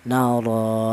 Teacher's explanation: cara bacanya itu dipanjangkan dua ketukan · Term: mad thobi'i